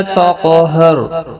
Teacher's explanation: را بھی پر پڑا جائے گا زبر کی وجہ سے وقف کی صورت میں بھی اور ملانے